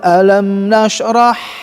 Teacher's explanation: Alam nashrah, ha ya harus bersih, kecil.